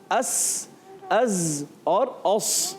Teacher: ایک آواز آتی ہے جی اس کو کہتے ہیں صفیر، اردو میں کہتے ہیں جھینگر، جس سے یہ آواز مشابہ ہوتی ہے · ان کا مخرج ہوتا ہے اصلۃ اللسان، یعنی زبان کی بالکل باریک نوک، اور ثنایا سفلا نیچے والے دانت، اور ما اتصال ثنایا علیا یعنی اوپر والے دانت جب قریب آ جاتے ہیں، ملتے ہیں قریب آ کے، اور زبان کی بالکل باریک نوک آگے آتی ہے تو ادا ہوتے ہیں زا، سین اور صاد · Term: حروف صفیریہ